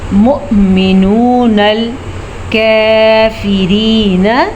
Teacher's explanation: मु हमज़ा को झटके के साथ पढ़ेंगे